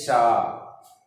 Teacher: इन व्यंजनों को उच्चारण एक प्रकार की रगड़ या घर्षण के द्वारा ऊष्म वायु से होता है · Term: ऊष्म व्यंजन